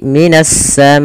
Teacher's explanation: alif lamnya diidghamkan ke huruf sin, maka menjadi minas samai. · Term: alif lam syamsiyah